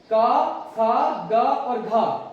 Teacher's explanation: का, खा, गा और घा का उच्चारण कहां से किया जाता है, कंठ से किया जाता है।